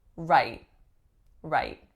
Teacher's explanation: the way I'm saying it, it has an unreleased T